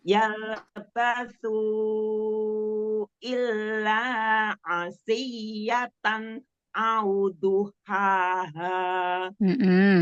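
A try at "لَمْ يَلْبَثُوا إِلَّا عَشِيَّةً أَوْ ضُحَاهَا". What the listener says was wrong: Tanwinnya jangan ngerem ya, kasih bainnya, kasih guna setingkat nakisoh. jadi dialirkan ya.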